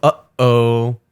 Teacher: it's called a glottal stop and so it's comparable to the sound you make when you go uhoh